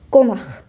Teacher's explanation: Əksər vaxtlar, əsasən, sözün sonundakı q keçir olur x